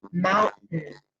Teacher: in that last syllable that's spelled T-A-I-N, I was really just making a nasal sound